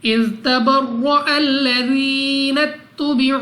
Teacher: वाव साकिन से पहले पेश वाव मद्दा 2 सेकंड तक लंबा करना है